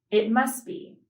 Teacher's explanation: The T sound is dropped in the phrase, it must be